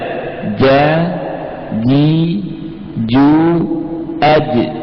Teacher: Huruf ini terbentuk dengan cara tengah lidah nempel di mana? Langit-langit, sehingga makhrajnya betul-betul tertutup dengan sempurna. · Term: jim